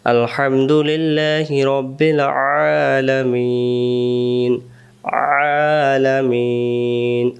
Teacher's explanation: আইন অক্ষর হলকের মধ্য থেকে একটু চেপে পড়তে হয়